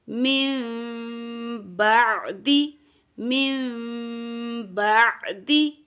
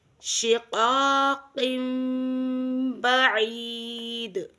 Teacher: نون ساکن یا تنوین کے بعد اگر حرف با آ جائے تو وہاں نون ساکن یا تنوین کی آواز کو میم میں بدل دیں گے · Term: اقلاب